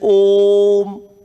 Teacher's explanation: प्लुत स्वर में, क्योंकि ओम के उच्चारण में लघु स्वरों की तुलना में तिगुना समय लगता है, इसलिए प्लुत स्वर कहलाता है